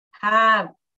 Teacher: Lower lip is touching that. Yeah, lower lip is going up and touching the upper teeth